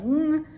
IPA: ŋ